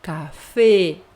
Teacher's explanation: depois a letra e nunca vai ser aberta